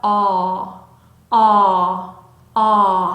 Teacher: 그래서 단모음의 소리는 입을 길게 열고 아 아 입 앞에서 나는 아 아 소리가 아니라 목구멍이서부터 어 어 하고 올라오는 소리면 좋겠습니다